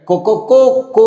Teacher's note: ಅಂತಂದ್ರೆ ಕಕೋ ಕೋ ಅಂತ ಕೂಗುತ್ತೆ ಅಂತ ಆ ಕೋ ಅನ್ನೋ ಪದ ಇದೆಯಲ್ಲ ಎರಡು ಮಾತ್ರಾ ಕಾಲಕ್ಕಿಂತಲೂ ಹೆಚ್ಚು ಸಮಯವನ್ನ ತೆಗೆದುಕೊಂಡು ಉಚ್ಚಾರ ಮಾಡುವುದರಿಂದ ಅದನ್ನ ಪ್ಲುತ ಅಂತ ಹೇಳಿ ಕರೀತಾರೆ